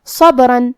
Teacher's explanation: یہاں با ساکن ہے تو ہمیں با کو قلقلہ سے پڑھنا ہے، اور قلقلہ کا معنی ہے حرف ساکن کو ہلانا، تو ہم یہ حرف کو ہلاتے ہوئے یہ کلمہ کو پڑھیں گے.